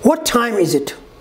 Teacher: The ta sound in what is dropped and the vowel sound before it is closed at that glottis. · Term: glottal stop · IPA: [ʔ]